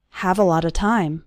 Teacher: All of those little words, a lot of, run together into a lotta.